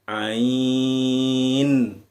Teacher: Nah, dai-nya habis, bunyi i-nya habis, 6 ketukan masuk ke bunyi nun.